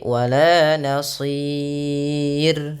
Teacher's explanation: Pada lafal sir rnya dibaca tipis jangan dibaca tebal.